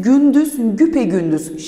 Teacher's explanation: Gündüz, güpegündüz şeklinde oluyor ve E sesinin türediğini görebiliyoruz